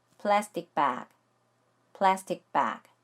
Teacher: ST를 빠르게 연결해서 발음해야 하기 때문에 T 소리를 된소리화 시켜서 ST 하고 발음하시면 돼요.